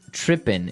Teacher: It doesn't have the G at the end, which isn't really grammatically correct, but that's kind of the way it's pronounced.